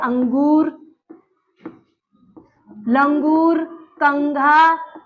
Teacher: तो इनको बोलिए आप तो उच्चारण कहां से आएगा नाक से अंगूर देखिए नाक में जोर पड़ा अंगूर कंघा नाक से ध्वनि